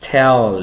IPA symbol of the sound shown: l